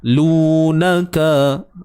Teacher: lu kita panjang 2 harakat ni, waw mad sebelumnya baris depan